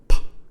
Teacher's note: Bilabial, bi meaning two, so it means it uses both the upper and the lower lip, which come into contact. They make a closure. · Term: bilabial plosive